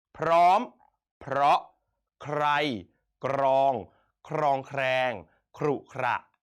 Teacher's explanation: คำควบแท้ก็คือคำที่อักษรควบเนี่ยออกเสียงพยัญชนะต้นทั้งสองตัวเป็นไงครับพร้อมกันนะครับ